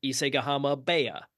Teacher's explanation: The H softens into a B. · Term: Rendaku